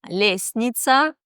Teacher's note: Или в слове «лестница» мы не слышим букву «т». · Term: непроизносимыми согласными